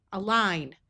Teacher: IGN has a long I sound with a silent G.